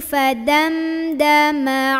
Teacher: Nah ini mim ketemu dal, bacanya jelas, jangan ditahan